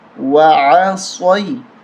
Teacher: یا زبر صوی، صاد کو موٹا کر کے پڑھیں گے، وعصوی، عین کو حلق سے نکالیں گے